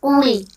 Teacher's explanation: سب سے پہلے آپ دیکھیں قوف موٹا ہے تو آپ نے قوف کو موٹا کر کے پڑھنا ہے، باریک نہیں پڑھنا